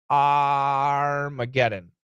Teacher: the first a it's a short o plus r